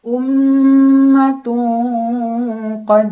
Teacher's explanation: karena ada Nun ada tanwin bertemu dengan huruf q cara bacanya tanwin dibunyikan samar-samar ke huruf q sambil dengung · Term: Ikfa abad